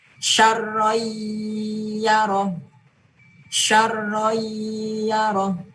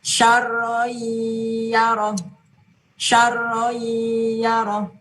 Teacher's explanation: Maka membacanya tanwinnya dileburkan ke huruf ya dan diberi dengung. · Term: idgham bi gunnah